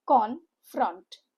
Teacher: Two syllable word. Stresses on the second syllable. Confront. U sound with O letters.